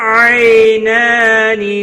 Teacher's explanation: آئی یا لین ہے تھوڑا نرمی کے ساتھ کھینچ کر ادا کریں گے